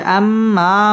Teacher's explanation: ওয়াজিব গুনা এখানে গুন্নাহ করে পড়তে হবে